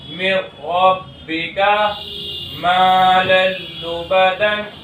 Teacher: اگر ان دو حرفوں میں سے کوئی حرف نون ساکن یا تنوین کے بعد آ جائے تو تنوین یا نون ساکن ادغام بلا غنہ کے حرف سے مل کر جلد پڑھا جائے گا، نہ کھینچے گا نہ غنہ ہوگا